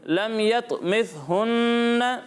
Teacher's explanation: سا میں سیٹی کی آواز نہیں آئے گی۔